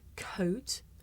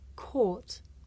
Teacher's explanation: it may be difficult to tell the difference between the diphthong oh and the long vowel or